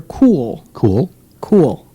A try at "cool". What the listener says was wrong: why is there an extra why is it two syllables it's not two syllables cool it elides into the l